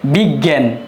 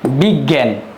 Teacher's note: শব্দের মধ্যে এবং শেষে উচ্চারিত হবে গ এবং গ চন্দ্রবিন্দু রূপে